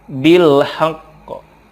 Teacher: Lanjut, bil haqqi, ketika waqaf dibacanya bil haqq. Karena qaf ini ada qalqalahnya, ditekan kemudian dipantulkan